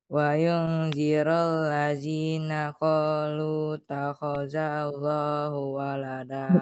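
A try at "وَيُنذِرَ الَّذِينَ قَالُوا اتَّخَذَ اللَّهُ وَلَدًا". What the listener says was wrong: Langsung dimasukin ya. Qalut langsung ada tasydidnya.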